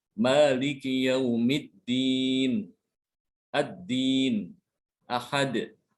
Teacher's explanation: Untuk huruf dal ini ketika dia sukun dia ada qalqalah ya, ada suara pantulan. Jadi begitu nempel ujung lidahnya ke pangkal gigi langsung dilepas.